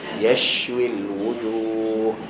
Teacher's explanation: shin ada hams, lepaskan angin dia dulu.